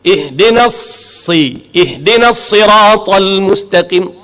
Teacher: Ta tu yang tebal, lam tu nipis. Jangan ihdinas siratal mustaqim tebal pada lam sekali berjangkit dengan ta, tak mau.